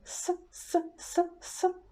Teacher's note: We take our teeth, we take our apex, we move apex forward, but we are not touching the teeth, we leave some gap, and we just pronounce s with less voice. We say s, s, s, s.